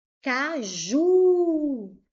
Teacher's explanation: A sílaba tônica forte é a última. Ela é uma palavra oxítona.